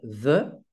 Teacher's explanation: les dents du haut se positionnent sur la lèvre du bas il y a un filet d'air qui passe avec un bruit de friction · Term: consonne fricative sonore labiodentale